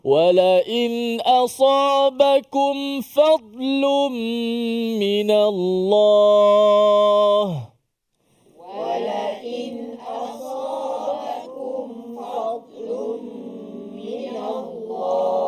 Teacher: Kemudian asabakum fadlun, kalimah fadlun tu dad mati di tengah-tengah itu. Fad ditebalkan dad dan tidak diqalqalahkan dad itu.